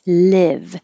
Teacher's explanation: The vowel is I, as in hit. So your tongue is not too high.